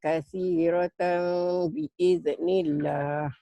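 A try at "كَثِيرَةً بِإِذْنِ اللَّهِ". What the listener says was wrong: Ini ikhfas apawi ya. Mirip ikhfas apawi bunyinya memang. Tapi jangan bibirnya jangan dibuka. Bibirnya dimingkemin, bunyi M.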